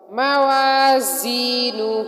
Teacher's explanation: یہاں پر زا کو سٹی کی آواز کے ساتھ سختی کے ساتھ پڑھیں گے، مضبوطی کے ساتھ پڑھیں گے